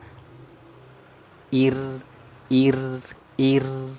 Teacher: huruf ro ini makhrajnya dari ujung lidah naik ke langit-langit